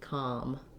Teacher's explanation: This letter O says the vowel. I like to rewrite that with an AH so you can kind of visualize that open back sound, com. Just like we say in .com, a com.